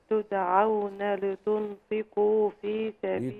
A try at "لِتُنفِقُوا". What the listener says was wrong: لتنفقوا، ما تسيبيش الغنة.